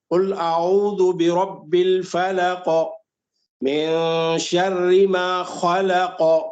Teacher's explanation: اس میں ہر آیت کے اینڈ میں قاف ہے، اسی لیے ہر آیت کے اینڈ میں اس میں قلقلہ ہے